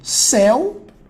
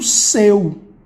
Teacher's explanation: eu tenho céu, isso aqui é pronúncia aberta. Agora, eu tenho seu, pronúncia fechada.